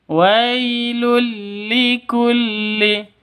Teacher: W itu sifat lin. Ah, sifatnya lin itu lentur, lemas, tidak boleh disentak. tidak boleh dipanjangkan